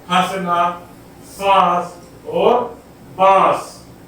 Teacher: चंद्रबिंदु लगे वर्णों के उच्चारण में वायु नाक और मुंह दोनों से बाहर निकलती है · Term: अनुनासिक